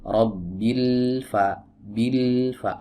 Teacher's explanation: Caranya adalah pertama, lam dia punya sifat yang namanya bainiyah, artinya suaranya itu dialirkan